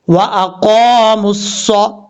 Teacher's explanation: व अक़ामुस्सौ, ये जो क़ाफ है 2 नुक्तों वाला, ये क़ाफ फुल मौत पढ़ा जाएगा, यानी हैवी साउंड, भारी साउंड के साथ पढ़ा जाएगा। 2 नुक्तों वाला क़ाफ हमेशा, क्योंकि ये हुरूफ मुस्ताला में से होता है, इसलिए इसको पुर पढ़ते हैं।